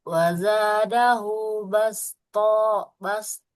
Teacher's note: huruf thnya enggak boleh kita panjangkan karena di situ harakatnya fathah tidak bertemu dengan alif